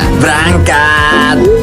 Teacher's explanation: dari kata berangkat itu merupakan penghilangan fonem E